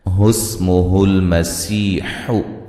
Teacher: यहाँ सीन को बारीक सीटी से अदा करेंगे